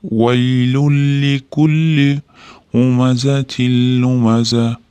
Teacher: Shuning uchun tashdid qo'yib bir-biriga kirgizib olgan. Vaylun deb tanvini o'qilmasdan vaylul deb urishtirib olamiz. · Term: idg'om